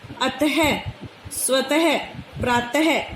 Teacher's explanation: दो डॉट होती हैं, ये विसर्ग का जो निशान है, इसका उच्चारण ह की तरह किया जाता है।